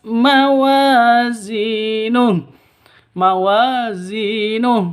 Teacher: mawazin wa panjang dua ketukan Zi juga dua ketukan Mad asli atau Mad Mad thi'i Alif diawali dengan fathah ya